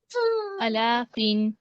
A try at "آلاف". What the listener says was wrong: الافن نہیں، الافن دیکھیے الاف، الا نہیں پڑھیں گے، الف کے اوپر کھڑی زبر ہے اس کو زبر نہیں پڑھیں گے، کھڑا پیش ہے آلاف.